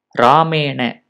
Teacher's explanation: रामेण इत्यत्र मूर्धन्य नकारस्य प्रयोगः कृतः अस्ति